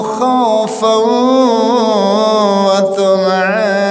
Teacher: ini ada tanwin ketemu wawu, berarti harus idgham dengan gun, dengan mendengung